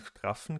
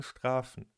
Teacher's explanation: Wie gesagt sprechen wir das /f/ in straffen genau gleich lang aus wie das in strafen.